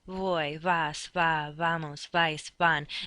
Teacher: Your lips barely touch each other. Voy, vas, va, vamos, vais, van, and the air just passes between them.